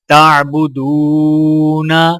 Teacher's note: دال کو واو کے ساتھ ملاتے ہوئے واولین ہے، یعنی کہ ایک الف کے برابر کھینچ کے پڑھا جائے گا، اور نون کے اوپر زبر ہے، نون کو بغیر کھینچے پڑھا جائے گا، اور وقف کرنے کی حالت میں دال کو واو کے ساتھ ملاتے ہوئے نون کے زبر کی جگہ جزم شمار کرتے ہوئے نون کو ساکن پڑھیں گے۔